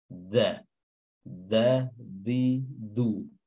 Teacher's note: ujung lidah bertemu dengan pangkal gigi seri atas tidak bertemu dengan langit-langit depan atau gusi jadi dia bertemu dengan gigi ya dan sebagian area ujung lidah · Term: dal